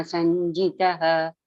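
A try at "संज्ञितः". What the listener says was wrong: Sanyitaha. Not G, no, sanyitaha. Ya comes first and nya comes first. So, nya, sanyitaha.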